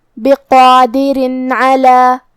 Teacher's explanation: ہم یہاں تنوین ظاہر کریں گے اور اسے نون ساکن پڑھیں گے اور بغیر غنہ سے یہ حکم کو ادا کریں گے